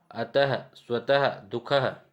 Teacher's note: विसर्ग यह भी अनुस्वार की भांति स्वर के बाद आता है। अनुस्वार की भांति स्वर के बाद आता है तथा यह उच्चारण में ह की तरह होता है